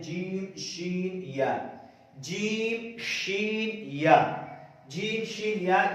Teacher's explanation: जीम शीन या कहां से अदा होते हैं ये आपको बता रहे, जुबान के दरमियान और तालु के दरमियान से अदा होते हैं। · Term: हुरूफ शजरिया